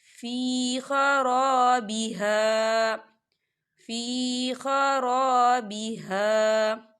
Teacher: خالی الف سے پہلے زبر ہے، تو دونوں جگہ پہ دو حرکت کے برابر کھینچ کے پڑھیں گے۔ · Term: الف مدہ